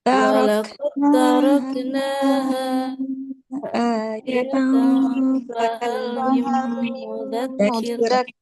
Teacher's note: langsung ya, langsung ke ta. Jadinya idgham kamil.